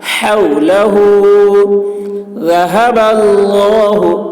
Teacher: ذال کی آواز باریک ہوگی اور اللہ کلام پور ہوگا